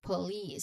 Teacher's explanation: You finish it with a little hissing sound letter s. So remember um you say it as police.